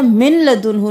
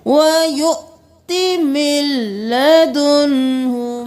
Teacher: मिन लदुन्हु नहीं करना, मीम ज़ेर लाम मिल, नून को छोड़ देना है